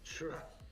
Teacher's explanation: You gotta get the CH sound from deep in your throat. Churra. Gotta roll the tongue.